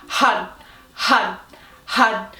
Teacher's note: So basically it's an R with the tip of the tongue striking the roof of the mouth